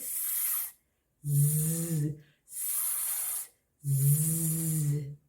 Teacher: So anyhow, and to make the both sounds, what we have to do is your tongue doesn't touch anywhere, but it almost touches behind your front teeth, but does not touch completely. Very close, but not you should not touch your tongue, okay? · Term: z sound